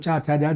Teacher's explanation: ये सब तालु से बोले जाते हैं